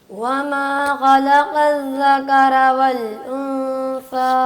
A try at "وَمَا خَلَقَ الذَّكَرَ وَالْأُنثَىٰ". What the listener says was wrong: وما وما, اس کو ذرا پہلے شروع والے حرف کو صحیح وما, وما, ما نہ کریں, پہلے صرف اتنا پڑھیں وما, منہ اچھی طرح کھولیں گے, سیدھی آواز نکالیں گے. وما, ابھی بھی ناک میں آواز جاری. وما نہیں, کوشش کرو جیسے کہتے ہیں نا با, وبا